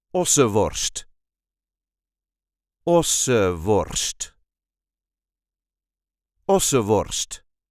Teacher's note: A lot of people will drop the N in the middle of the word